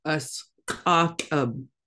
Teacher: you've got that glottalized Q that's still the back of the back of your throat, and it's a sound.